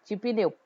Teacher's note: o fluxo de ar Quando passou a glote estava aberta no momento que ela está fechada ela acontece uma passagem de